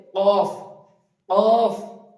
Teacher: আলাজি বা জীবের শেষ ভাগ। উপরের তালুর সঙ্গে লাগিয়ে উচ্চারিত হবে